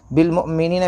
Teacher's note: پیش مؤ، بالمؤ، میم زیر می، نون یا زیر نی، بالمؤمنین، یا ساکن سے پہلے زیر یا مدہ تھوڑا کھینچ کر پڑھے